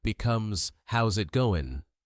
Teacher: The final G drops off